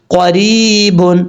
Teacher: قاف حروف مستعلیہ میں سے ہے، پر پڑھا جائے گا. را کے نیچے زیر ہے، را بریک پڑھیں گے